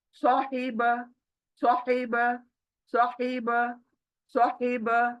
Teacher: सौ मोटा है, हा हलक के बीच से